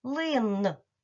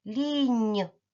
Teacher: в кінці слова н який він приголосний твердий